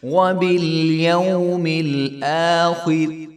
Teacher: آخر حمزہ کے اوپر کھڑا زبر ہے تو اس کو بھی ایک الف کے برابر لمبا کریں گے. وبالیوم الآخر، خا موٹی ہوگی اور را کے نیچے کسرہ ہے تو یہ را بریک ہوگی، آخر.